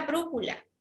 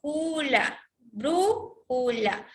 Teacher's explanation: Bru es la mayor fuerza de voz. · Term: sílaba tónica